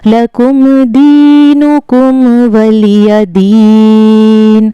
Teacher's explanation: میم کو ظاہر کر کے بغیر غنہ کے پڑھتے ہیں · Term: میم ساکن کا اظہار